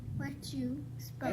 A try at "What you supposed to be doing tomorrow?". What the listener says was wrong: That's one word, not what you. What you supposed to be doing tomorrow?